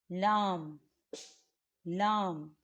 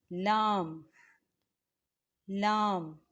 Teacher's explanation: زبان کا کنارہ اور دانتوں کی جڑ کے تالو کے جانب والے حصے سے لام ادا ہوتا ہے